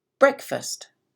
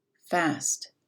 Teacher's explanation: the a is much less clear much quicker and also the pitch is lower it's kind of muddy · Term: de-stressed